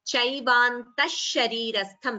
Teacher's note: So an extra sh, samyuktakshara sh is added instead of the visarga. Sharirastham, tha is mahaprana.